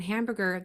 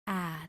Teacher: sound for a is a that big wide mouth a but if there is a nasal sound after that M or n where the sound comes out your nose it distorts that a sound